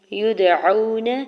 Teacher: یدعون، یا کی پیش کو دال ساکن کے ساتھ ملاتے ہوئے دال ساکن پہ کلکلا کریں گے۔ واو ساکن سے پہلے عین کے اوپر زبر ہے، واو لین ہو رہا ہے، نرمی سے موڑتے ہوئے ادا کریں گے۔ نون کے زبر کو بغیر کھینچے ہوئے ادا کرنا ہے۔